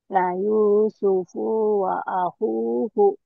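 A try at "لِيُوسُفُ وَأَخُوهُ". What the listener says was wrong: Pendek. La Yusufu wa akhuhu. La Yusufu wa akhuhu.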